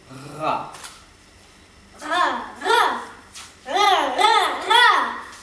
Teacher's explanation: en portant le bout de la langue jusqu'au haut du palais, de sorte qu'étant frôlée par l'air qui en sort avec force, elle lui cède et revient toujours en place, faisant une manière de tremblement.